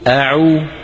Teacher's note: أعو الهمزة من أقصى الحلق، العين من وسط الحلق يعني أعلى، أعو، أعو.